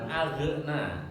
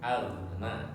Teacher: Ghain huruf halqi ya di dalam tenggorokan.